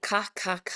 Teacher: making a ka ka ka sound on the back of the throat. That really gets to the back of the throat.